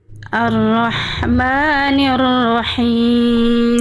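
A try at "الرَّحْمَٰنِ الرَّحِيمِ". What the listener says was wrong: Ya bagus, lanjut ayat 4.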